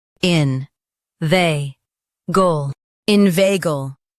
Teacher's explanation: Stress vei and keep gull light.